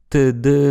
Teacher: en français, on les prononce comme des dentales, et si on a besoin de préciser la prononciation, on peut le faire avec des diacritiques. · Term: occlusives dentales